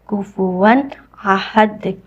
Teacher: کفواً احد، واو کے اوپر تنوین ہے، تنوین کہتے ہیں فتحتین کسرتین دمتین کو، تو تنوین کے بعد جب بھی حمزہ آ جائے تو ہم نے یہاں اظہار کرنا ہوتا ہے، یعنی ہم نون کو یہاں ظاہر کر کے پڑھیں گے